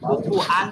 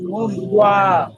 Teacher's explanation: মুখটাকে গোল করে, দুই ঠোঁটটাকে গোল করে যখন বলবেন, তখন ওটা ওই ওয়াওয়ের উচ্চারণটাই আসবে